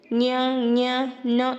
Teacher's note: ಅನುನಾಸಿಕ ಅಕ್ಷರಗಳು ಅಂತಂದ್ರೆ ಮೂಗಿನ ಸಹಾಯದಿಂದ ಉಚ್ಚರಿಸುವ ಅಕ್ಷರಗಳು